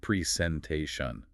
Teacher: The main stress is on the te.